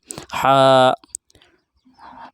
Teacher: हा दरमियानी हलक से यानी हलक के आधे हिस्से से अदा होता है